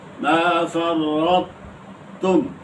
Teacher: ادغام یوں کرو کہ طا تا میں مدغم بھی ہو اور طا میں قلقلہ بھی نہ ہو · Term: ادغام ناقص